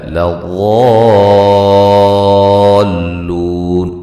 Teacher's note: لو واو مدہ ہے، اس کی مقدار 5 سے 6 الف کے برابر ہوگی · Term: مد لازم